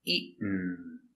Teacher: To eat, also a stop T with eat, eaten. So the stop T falls to the N.